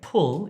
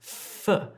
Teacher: When I'm making this f sound, my top teeth are on my bottom lip and I'm pushing air through.